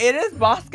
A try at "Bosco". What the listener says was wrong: It is Bosco, but you sound like saying Boscov's.